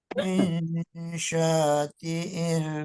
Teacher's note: diikhfakan, disamarkan dan ditahan dulu 2 harokat minimal